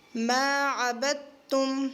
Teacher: اس دال کو نہیں پڑھیں گے، تا کے ساتھ ملائیں گے